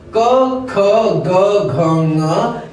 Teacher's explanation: हमारे कंठ से ये 5 वर्ण सीधे सीधे उच्चारित होते हैं, वायु केवल कंठ में टकराकर बाहर निकलता है।